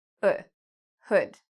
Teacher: So it's a short sound, hood. My mouth isn't really open that much, hood. So this is actually this sound, hood, hood.